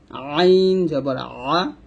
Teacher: গলার মাঝখান থেকে একটু চাপ দিয়ে আইন জবর আ চাপ দিয়ে বলবো, আইন জবর আ।